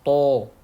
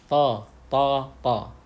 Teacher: Jadi ketika ucapkan huruf ta, angkat lidahnya dan akan terdengar suara tebal. Ya, ta, tidak perlu harus to seperti mengucapkan kata anto ya. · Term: huruf isti'la